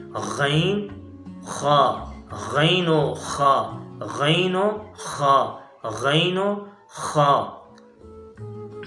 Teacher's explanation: یہ 2 حروف ادنی حلق سے یعنی پہلے حلق سے ادا ہوتے ہیں، وہ حلق کا حصہ جو منہ کے ساتھ جڑا ہوا ہوتا ہے